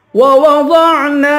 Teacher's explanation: ووضعنا دونوں واو پر ہونٹ گول کریں گے، غوط کو پر پڑھیں گے، نون کو ایک الف کی مقدار کھینچ کے پڑھیں گے، الف حروف مدہ میں سے ہے.